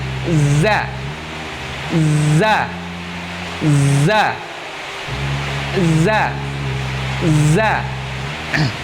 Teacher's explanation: meletakkan ujung lidah paling depan, ujung lidah paling terdepan pada dinding 2 gigi seri bawah, sehingga suara keluar di antara gigi seri atas dan gigi seri bawah